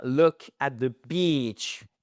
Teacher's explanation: c'est bien look at the beach et pas un i court